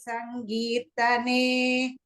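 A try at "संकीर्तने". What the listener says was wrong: Sankirtane. I heard it as ga. Ka, little bit clearer. One general thing, you can chant slower so that your letters are clearer.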